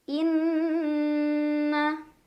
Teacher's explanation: ada gunnah musyaddadah karena ada nun yang bertasydid. Cara bacanya didengungkan, ditahan kurang lebih 2 harokat.